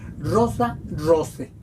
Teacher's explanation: ae es un diptongo ae igual que el oe es otro diptongo se pronuncian como e